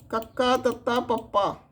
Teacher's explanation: ਅਤੀ ਅਲਪ ਮੁਖਰ ਅਘੋਸ਼ ਧੁਨੀਆਂ